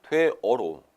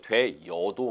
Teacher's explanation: 어로 발음함을 원칙으로 하되 여로 발음할 수도 있다.